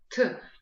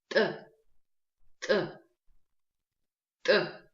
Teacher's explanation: произносится он за счет резкого размыкания губ, без придыхания